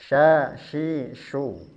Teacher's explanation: sya syi su kita akan bahas sifatnya dari segi nafas huruf syin ini memiliki sifat hames artinya harus ada nafas yang keluar